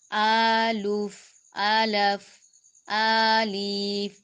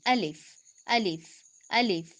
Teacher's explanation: الف، تیزی سے منہ کے خالی حصے سے ادا ہوگا